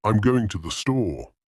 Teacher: In a statement like, I'm going to the store, the voice usually falls at the end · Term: Intonation